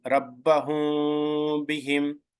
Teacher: It is ikhfa shafawi. Meme sound must be concealed, should not appear. So meme sakin sound must be hidden.